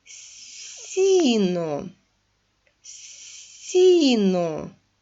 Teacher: в цьому слові звук с м'який